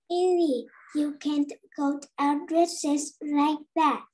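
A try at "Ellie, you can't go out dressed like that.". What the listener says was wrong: You don't say dresses. Ellie, you can go out dressed. Nó có cái âm t, t ở đuôi. Nào, nó cũng chỉ là một âm thôi. Dressed.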